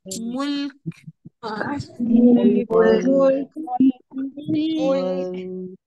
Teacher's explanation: मीम की पेश बारीक, लाम बारीक